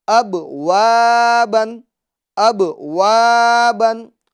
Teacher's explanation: اور اس کے اندر حرف مد ہوگا الف مدہ ہوگا اور الف مدہ کو ایک الف کی مقدار یعنی 2 حرکت کے برابر کھینچ کر ہم پڑھتے ہیں